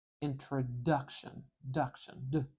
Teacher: I'm putting my tongue up behind my teeth and I'm stopping the air briefly and then exploding it out.